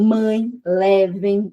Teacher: quando você tem um ditongo nasal, parte do ar, parte do som vai sair meio que pelo nariz